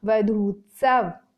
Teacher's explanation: अगले उदाहरण के अनुसार वधू धन उत्सव, अब यहाँ पर बड़ा ऊ और छोटा ऊ दोनों मिलकर के परिवर्तित हो गए बड़ा ऊ में, नया शब्द बना वधूत्सव।